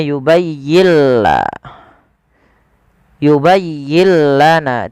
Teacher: Idghamnya adalah nun sukunnya diidghamkan ke huruf lam. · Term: idgham bila gunnah